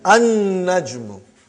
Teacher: You did not pronounce lam because noon is a shamsi, sun letter.